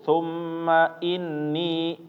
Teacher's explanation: mim dan nun ketika bertasydid dua-duanya harus ditahan ya. Jangan terlalu buru-buru.